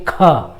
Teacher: तो क बोलते हैं, इसमें ह की ध्वनि नहीं आती है, लेकिन ख बोलते हैं तो एक आभास होता है कि ख, जैसा लग रहा है कि ह का भी उच्चारण हो जा रहा है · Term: महाप्राण